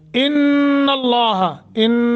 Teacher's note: इन ये गुन्ना करेंगे, नून मुशद्दद है। लफ्ज़ अल्लाह पर तफखीम करेंगे, पुर करेंगे, मुंह भर कर पढ़ेंगे।